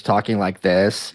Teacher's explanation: vocal fry which is talking like this is an affectation that women use